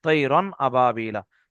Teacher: আর রন বলে আওয়াজটা নাকে ধরে রাখবো না, শুধু উচ্চারণ করে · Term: ইজহারে হালকি